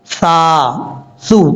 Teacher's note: سا جو ہے اس کا مخرج ہے زبان کا سرا، اوپر والے دانتوں کے اوپر والے جو 2 دانت ہیں ان کا جو اندرونی کنارہ ہے وہاں سے زبان کا سرا لگے گا